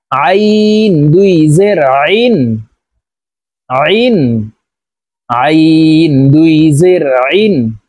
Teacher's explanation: আইন হরফ হলকের মধ্যখান থেকে চাপ দিয়ে উচ্চারণ করতে হবে, কারণ আইনের মাখরাজ হলকের মধ্যখান থেকে হবে। আমরা অনেকে এই আইনের উচ্চারণ সঠিকভাবে উচ্চারণ করতে পারি না, আইনের উচ্চারণ হামজার উচ্চারণ করে থাকি।